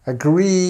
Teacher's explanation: agree is actually uh a word that you need to make sure you get this stress on the second part